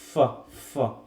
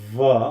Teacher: ফ উচ্চারণ করতে গিয়ে কাঁপছে না কিন্তু আমার গলার ভয়েসটা, জাস্ট বাতাসটা বার হচ্ছে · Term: ভয়েসলেস